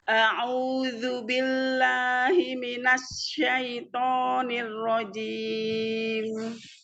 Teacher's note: shin punya sifat yang khas yaitu tafasyi, menyebarnya suara di dalam mulut. Jadi tampakkan sifat tafasyinya biar enggak sama dengan huruf sin, ya.